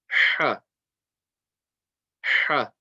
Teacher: very strong sound from the middle of the throat, Ha, and with the fatha, it's just going to be Ha, Ha.